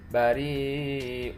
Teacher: ya sukun bertemu dengan hamzah setelahnya itu hukumnya mad wajib muttasil karena masih dalam satu kalimat, dibaca hingga 6 harokat